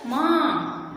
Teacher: जैसे माँ शब्द लिखते हैं तो क्या बोलते हैं, हम कैसे बोलते हैं, माँ, है ना, मुंह से और नाक से दोनों से ध्वनि निकल रही है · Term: अनुनासिक